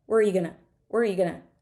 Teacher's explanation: where are you going to is going to get squished together